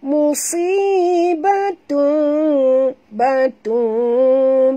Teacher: iqlab tutup mulut ya, tapi tak rapat macam idgham, maknanya kira-kira boleh lalu sehelai kertas di antara dua bibir kita ya